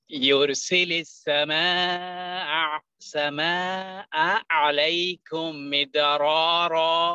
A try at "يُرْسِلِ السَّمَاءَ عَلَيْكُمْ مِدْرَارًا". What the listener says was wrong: Much better.